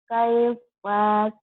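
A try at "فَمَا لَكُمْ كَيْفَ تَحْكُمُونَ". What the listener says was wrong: masih agak nahan tuh. Ayo coba jangan dipanjangin ya.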